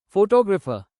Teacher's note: Photographer stress moves to second syllable.